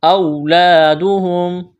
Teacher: واولین ہے، اس کو کھینچنا نہیں ہے